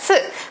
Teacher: 니은과 같은 자리에서 시옷, 스 발음이 날 것입니다